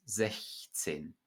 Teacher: you do pronounce the CH, the soft CH following the front vowel.